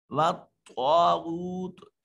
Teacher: طا صفت استعلاء کی وجہ سے اس کو مفخم ادا کریں گے۔ غین میں بھی صفت استعلاء ہے، غین واغو واو ساکن ما قبل مضموم واو مدہ۔